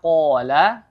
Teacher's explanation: lagi ya perhatikan huruf qf Ya seperti tadi sebelumnya seperti sebelumnya huruf qf makhrajnya ada di pangkal tenggorokan dibacanya harus dengan menebalkan yaitu dengan cara diangkat lidahnya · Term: huruf qaf